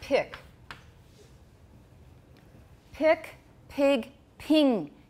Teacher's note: vowel coming before a voiceless stop that's pick pick pig ping can you hear that vowel getting higher and higher